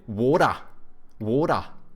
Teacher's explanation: they take like the soft D's from Americans, but they don't pronounce R's. They also say a schwa like the Brits.